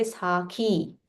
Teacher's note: Mahaprana kha and it is dirgha.